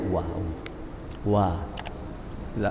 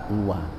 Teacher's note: ketika kita ucapkan huruf waw ini yang berperan adalah kedua bibir ya